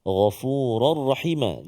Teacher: Masukkan tanwin ke dalam ra tanpa dengung. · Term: idgham bila gunnah